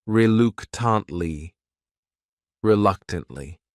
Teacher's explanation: This word has 4 syllables, and the stress is on that second syllable